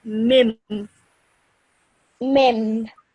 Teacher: So what happens is this noon sort of becomes a meme. So you would pronounce it as mim.